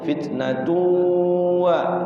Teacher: Jadi kalau ada tanwin bertemu huruf waw nun mim ya, jadi masuk ke dalam huruf waw, tanwinnya itu masukin ke waw tuh bunyi waw, sehingga dinamakan idgham. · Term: idgham bigunnah